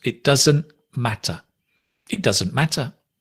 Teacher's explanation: Notice again, it doesn't, the t drops.